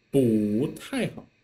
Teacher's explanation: because 太 in the middle is the fourth tone, right? So, 不太好, 不 here has to read it as the second tone